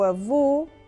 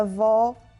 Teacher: Avô com vogal fechada e avó com a vogal aberta.